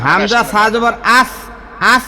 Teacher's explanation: জিহবার আগাটা যাইয়া সামনের উপরের দাঁতের সঙ্গে লাগে